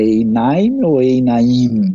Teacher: no dual a gente sempre pronuncia a penúltima, a sílaba mais forte